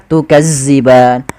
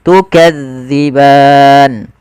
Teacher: pada lafal Ma kemudian tukadban hati-hati di dalam melafalkan Zal karena Zal ini salah satu huruf idlak yang dia pelafalannya di ujung lidah kita menempel dengan Gigi Sari